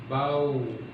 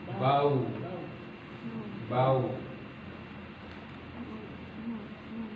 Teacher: Bagaimana kita mengetahui dia keluar dari dua bibir adalah dengan cara melafalkan huruf waw ini ya, dengan memberikan tanda waw sakinah ya. Bau, ada gerakan dua bibir ya. Dia mencucu maju ke depan.